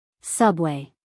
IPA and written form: ˈsʌbweɪ (subway)